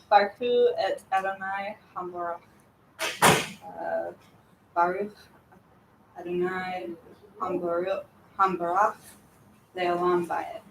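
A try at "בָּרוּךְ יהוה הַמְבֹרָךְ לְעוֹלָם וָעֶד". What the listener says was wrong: Perfect. Yep. These are things we say every week.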